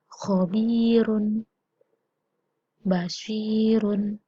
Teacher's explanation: Apabila ro didahului oleh huruf ya sukun, maka bacanya adalah tarkik. Ini adalah tipis.